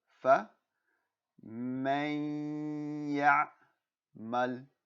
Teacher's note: So there's that nun sakin, and that after the nun sakin there is a shadda, so we're going to drop the nun sakin